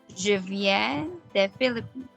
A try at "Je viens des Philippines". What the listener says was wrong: Yes, that's great.